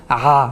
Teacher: So what we are saying is the ayn has to be pronounced from the back of the mouth, at the back of the middle of the throat, which is aha, so they can practice like that.